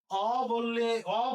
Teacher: আর যদি আমি অ বলি তাহলে মুখ বড় হয়ে যায়, এই উচ্চারণকে বলা হবে বিবৃত উচ্চারণ।